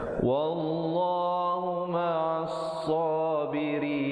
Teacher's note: Wallah datang sebelumnya baris atas dibaca tebal, 2 harakat. Huma nun baris ain baris atas, terus naik di atas sad yang bersabdu, alif lam syamsiah di situ.